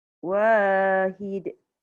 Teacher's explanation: Wa panjang sebab ada alif.